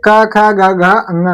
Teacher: तो हम देखेंगे जो हमारा क वर्ग है इसका उच्चारण स्थान जो है वो हमारा कंठ है जो हमारे क ख है ये हमारे कंठ भाग से उच्चारित होते हैं